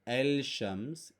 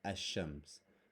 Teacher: An example is Shams, which means sun. And when you add L to it to make it the sun, the lam becomes silent. So it's not El Shams, it's Ash-Shams.